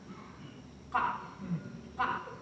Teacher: Está saliendo el aire para producir A y se cierran las cuerdas vocales. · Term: glótico